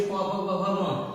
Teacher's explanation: तो जब भी हम प फ ब भ म का उच्चारण करेंगे तो हमारी जो जीभ के माध्यम से जो अक्षर निकलते हैं, ध्वनि निकलते हैं, तो वो हमारे ओठ से सट के, जैसे हम लोग प बोलेंगे तो हमारे ओठ जो है बंद हो रही है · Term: प वर्ग